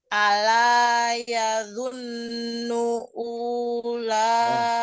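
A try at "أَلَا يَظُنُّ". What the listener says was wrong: Unya pendek. Unya pendek. Ini enggak dibaca wawunya.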